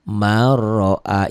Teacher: nun mati atau tanwin saat bertemu dengan ro ini masuk dengan suara tak dengung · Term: idgham bilagunnah